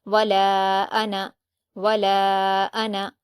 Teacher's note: یہ ایک ایکسیپشن ہوتا ہے کہ اس کو ہم الف مدہ کی طرح نہیں پڑھتے، نون کو صرف زبر کی طرح پڑھتے ہیں، حرکت کی طرح پڑھتے ہیں۔